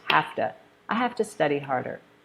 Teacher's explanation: we change the V to an F sound and we change the U in two to ah